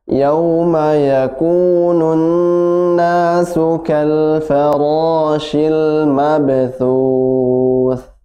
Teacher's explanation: ditahan 2 harokat, nun didengungkan